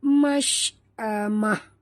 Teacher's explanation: Mash bunyikan tafashi pada huruf shin.